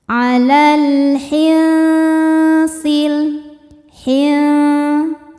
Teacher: Sebab alif lam menghadapi huruf qamariah yaitu ha. Cara bacanya lam sukun dibaca izhar atau jelas. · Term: alif lam qamariah